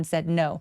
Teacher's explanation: d발음은 디귿 받침처럼 아주 가볍게 처리해 주시고요